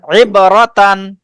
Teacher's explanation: র টান দেওয়া যাবে না। হ্যাঁ, হরকত তো তাড়াতাড়ি পড়তে হবে।